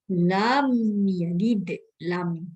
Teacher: Izhar di dalam hukum mim mati lah, iaitu izhar syafawi. Huruf mim mati bertemu dengan huruf ya. Cara membacanya, suara mim mati dibaca dengan jelas.